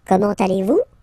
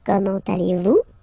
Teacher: it's a question, so raise a little bit your voice at the end